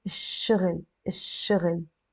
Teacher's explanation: we will pronounce it الشغل, الشغل, without the L sound · And whenever a word starts with a sun letter, and all the words that start with a shin, whenever they have an L just before them, we're not going to pronounce the L. We will pretend it's not there. And instead, we're going to put a shadda on the letter shin.